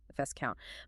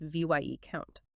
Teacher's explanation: It drops the s entirely in speech because etymologically it evolved from vice count, meaning a deputy or inferior count.